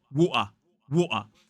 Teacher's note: And that noise in the middle of a Cockney accent, water, is known as a glottal stop. It's a glottal T.